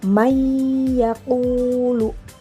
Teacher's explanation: Maka bunyi nunnya jadi tidak terdengar karena dia langsung melebur dengan huruf ya. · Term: idgam bigunah, idgham bi gunnah